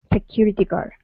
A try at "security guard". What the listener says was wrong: Give me a D at the end of guard. Security guard.